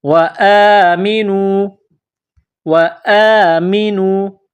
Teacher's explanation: الف کے اوپر کڑا زبر ہے. ایک الف کے برابر اس کو کھینچ کر پڑھیں گے. اس الف کو حمزہ میں کنورٹ کرنا ہے.